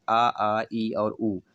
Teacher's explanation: जब भी ऊ बोलते हैं तो आपके दोनों ओठ आपस में टकरा जाते हैं या पास पहुंच जाते हैं, तो ये हमारा ओष्ठ वर्ण कहला जाता है ऊ।